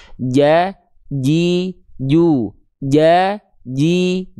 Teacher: betul-betul nempel tidak ada celah sehingga huruf jimnya enggak keluar percikan nafas, enggak dibaca cicu, tapi ja ji ju ja ji ju enggak ada ja cu jim enggak boleh keluar percikan nafas · Tengah lidah dari huruf jim ketika dilafalkan itu, lihat gambar, dia nempel ya, titik berwarna hitam. Tengah lidah kita itu nempel ke langit-langit. Betul-betul nempel, tidak ada celah, sehingga huruf jimnya nggak keluar percikan nafas. nggak dibaca ja cicu, tapi ja ji ju, ja ji ju, nggak ada ja cicu.